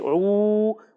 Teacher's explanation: عین کی ادائیگی حلق کے درمیان والے حصے سے ہوگی